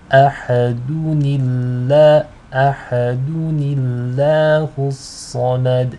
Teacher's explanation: So to connect between the two, you have to read it as ahadunillah, ahadunillahu samad. In this case, the lam will be light because it is preceded by a noon with a kasra.